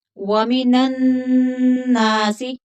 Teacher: नून मुशद्दद है तो यहाँ गुन्ना करेंगे।